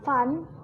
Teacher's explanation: konsonan F, menggunakan suara gigi atas dan bibir bawah, dilafalkan seperti konsonan F pada umumnya dalam bahasa Indonesia.